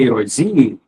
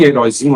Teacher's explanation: Então, a sílaba tônica em heróizinho é o zi.